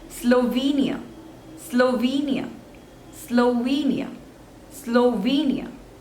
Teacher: so again there are three syllables and the stress is on the second one